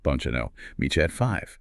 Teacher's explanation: when a T meets a Y, they merge into a CH sound, like cheese.